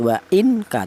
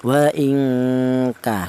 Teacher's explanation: Jadi cara bacanya nun mati ini tidak boleh dibaca jelas. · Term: ikhfa